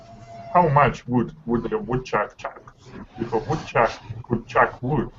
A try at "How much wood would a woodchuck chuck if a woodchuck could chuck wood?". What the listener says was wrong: Still a little tense on your ooh, but much better.